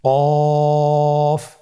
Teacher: কফ উচ্চারণের ক্ষেত্রে একটু মোটা করে উচ্চারণ করতে হবে।